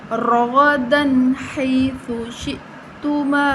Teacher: رَغَدًا حَيْثُ شِئْتُمَا، را غین پر پڑھے جائیں گے، یا لین ہے، بغیر کھینچے نرمی کے ساتھ بغیر جھٹکا دیے پڑھیں گے